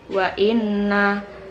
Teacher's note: terdapat hukum bacaan ghunah karena nun bertasydid